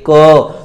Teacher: तो ध्वनि जो है यहाँ कंठ के अंदर वाइब्रेशन सा होता है।